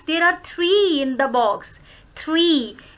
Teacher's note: Enumerations में हम अपने जो intonation है, it rises.